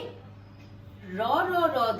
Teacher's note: র কম্পনজাত ধ্বনি, প্রকৃতির দিক থেকে ঘোষধ্বনি, স্বরতন্ত্রের কম্পনের দিক থেকে, বাতাসের বেগের দিক থেকে অল্প প্রাণধ্বনি এবং স্থানগত দিক থেকে দন্তমূলীয় ধ্বনি হিসেবে চিহ্নিত। · দাঁতের গোড়ায় জিভের ডগা চালনা করে র র র ধ্বনি উচ্চারণ করতে বা তরঙ্গ সৃষ্টি করতে